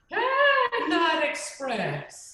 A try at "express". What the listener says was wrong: Yeah, put a little bit more air into the express. Yeah, you're going this way. Can you go vertical? Express.